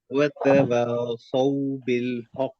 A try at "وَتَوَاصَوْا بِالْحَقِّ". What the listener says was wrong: हाँ, वतवासौ के बजाय वासौ, मुंह को गोल करना है। वतवासौ, वतवासौ।